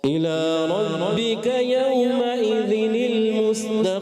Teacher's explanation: یعنی مشدد رکھنا ہے را کو